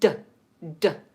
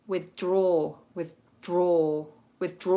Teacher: the tongue is just touching the alveolar Ridge which is just behind the top teeth and it doesn't touch the teeth at all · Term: clean duh